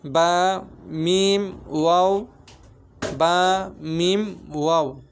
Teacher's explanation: 15 নম্বর মাকরাজ দুই ঠোঁট মাঝখান হইতে উচ্চারিত হয়